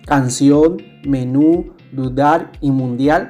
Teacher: llevan la mayor fuerza de voz en la última sílaba y cuando termina en la consonante N, S o en vocal, como vemos en los ejemplos. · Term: palabras agudas